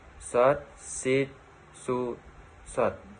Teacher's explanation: Melafalkan huruf shod, tempat keluarnya sama seperti melafalkan huruf sin. Yang membedakan sin dan shod adalah suaranya menebal saat melafalkan huruf shod.